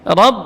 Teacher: Ra tidak boleh cenderung ke o, ya. Tidak boleh juga dibaca tipis, bukan ra, bukan juga ro, tapi ra. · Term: fathah namun tebal